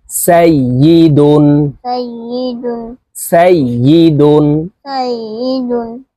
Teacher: তানবিনের উচ্চারণ নুন যুক্ত ভাবে তাড়াতাড়ি করিয়া পড়তে হবে